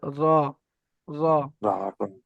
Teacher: তারপরে দেখেন 10 নম্বর মাখরাজ, জিভের আগার উল্টো পিঠ এবং তার বরাবর উপরে তালুর সাথে লাগিয়ে উচ্চারিত হয় র। জিভের আগার উল্টো পিঠ, জিভের আগা এর উল্টো পিঠটা, উল্টো পিঠটা ওই সোজা উপরে তালুর সঙ্গে লাগবে র, র।